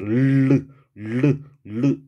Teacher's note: 요 리을만이 입천장을 혀가 막은 상태에서 르 이러면서 흘러나가는 소리예요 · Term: 유음